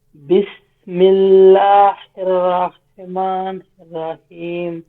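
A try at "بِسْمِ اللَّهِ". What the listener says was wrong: হ্যাঁ, বিসমিল্লাহ হির না, এটা কি হির, এটা গোলহা, এটা এখান থেকে গম্ভীর আওয়াজে বিসমিল্লাহির রহ, হির, হির, হির, হির।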